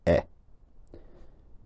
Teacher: unrounded, roughly mid-height front vowel, something like e